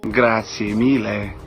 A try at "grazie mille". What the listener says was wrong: Mille con la L lunga.